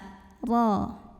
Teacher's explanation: Huruf ra dibunyikan secara tafkhim karena ra-nya ini berbaris di atas fathah. Cara membacanya ditebalkan, pangkal lidah kita diangkat.